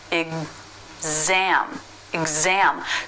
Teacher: there's a syllable break between the two sounds that this one letter X makes exam exam so the z sound starts the stressed syllable exam · You know what I find interesting about these 2 pronunciations is that there's a syllable break between the 2 sounds that this one letter X makes.